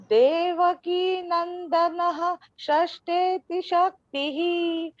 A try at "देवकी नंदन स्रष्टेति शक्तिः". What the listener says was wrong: आपको देवकी नंदनः बोलने की आवश्यकता नहीं है, ठीक है। देवकी नंदनस एक्चुअली वो मिला के बोलने का रहता है, ठीक है।